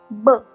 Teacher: विक्रम वज्रचा वज्र ब याला भाषाशास्त्रात बायलेबियल फ्लोसिफ असं म्हणतात. तर बायलेबियल म्हणजे दोन्ही ओठ घट्टबंद करून क्लोजिव म्हणजेच स्फोट किंवा एक्सप्लोजन सारखी जोराने हवा सोडली जाते. ब · असं म्हणतात. तर बायलेबियल म्हणजे दोन्ही ओठ घट्टबंद करून क्लोजिव म्हणजेच स्फोट किंवा एक्सप्लोजन सारखी जोराने हवा सोडली जाते . ब ज्यामुळे या सर्व शब्दोच्चारात एक वेगळीच शक्ती आहे जी